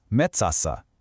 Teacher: It uses front vowels. So the suffix has to change to match.